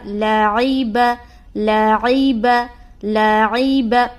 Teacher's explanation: لام کو بھی باریک اور عین کو بھی باریک اور با کو بھی باریک، تینوں کو باریک نکالنی ہے۔ بعض اوقات لوگ لام کو موٹا کر دیتے ہیں، تو لام کو موٹا نہیں کرنا۔ · عین کا مخرج ہے وسط حلق، یعنی حلق کا جو درمیانی حصہ ہے وہ۔